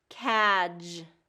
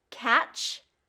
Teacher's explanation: a lot of times instead of that j sound and getting that voice on, it becomes the ch sound.